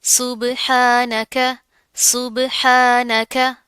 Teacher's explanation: बा के ऊपर क्या जज्म आ रही है, कलकला करेंगे